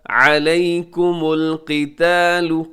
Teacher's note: قاف کے نیچے زیر ہے لیکن اس کے باوجود قاف پر پڑی جائے گی، قتال وهو کرہ لکم، کرہ لکم، یہاں را ساکن ہے کرہن میں اور را ساکن سے پہلے پیش ہے تو را تو موٹی پڑی جائے گی، اس کے بعد کرہ لکم میں ہاں کے اوپر تنوین کے بعد آگے لام ہے، ادغام یہاں پر ہوگا لیکن بغیر غننے کے ادغام ہوگا۔